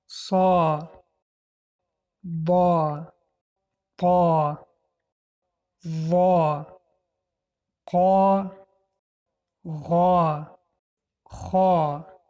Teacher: دهان را پره کرده قفای زبان را به بالا برداشته خوانده می شوند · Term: حرفهای استعلا